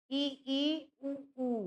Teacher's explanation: संवृत में क्या होता है कि यहाँ पे मुख जो है लगभग बंद रहता है।